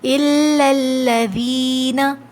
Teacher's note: دونوں لاموں کو ہم باریک ہی پڑھیں گے، ٹھیک ہے، چاہے اس سے پہلے زبر آ جائے یا پیش، اس لیے کہ یہ لفظ اللہ نہیں ہے۔